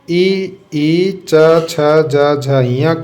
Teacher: ई, च, छ, ज, झ, ञ का भी उच्चारण स्थान तालु है